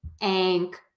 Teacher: that NG sound and an NG sound is sort of that it's that nasal sound that we make with the tongue tip really low in the mouth like you would say the g sound or the k sound